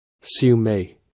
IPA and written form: ˌsju ˈmeɪ (Siu mei)